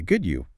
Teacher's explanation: they use a rising tone at the end. The voice goes up on you.